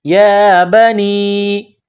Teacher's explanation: یا کے اوپر کڑا زبر ہے، ایک الف کی لمٹ میں کھینچنا ہے